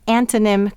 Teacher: what do we hear when we say antonym quickly we hear the schwa sound